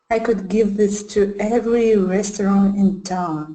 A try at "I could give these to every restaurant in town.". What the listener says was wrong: Now this one, before this sounded like these, and now these sounds like this.